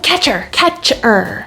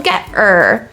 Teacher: i'm removing the h sound